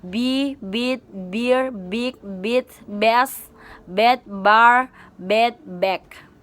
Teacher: Voice bilabial stop sound